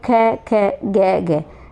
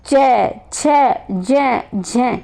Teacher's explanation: कहने का मतलब ये है कि जब आप देखो ये बोले ना कह तो इनके उच्चारण से डबल यानी अपेक्षाकृत ज़्यादा समय लगता है। वे उच्चारण के बाद वाला भाग संघर्षी हो जाता है, यानी संघर्ष कुछ ज़्यादा लग रहा है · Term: सपर्श संघर्षी